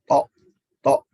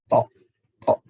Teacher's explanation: lidah menempel sebagian ke pangkal gigi dan sebagian ke daging. To, to. Ya, jadi sebagian ada yang menempel ke pangkal gigi, ada juga yang ke daging. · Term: huruf to